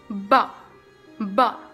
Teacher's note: It's a voice that pronounced with the two lips pressed tightly together, then release. Ba, ba. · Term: bilabial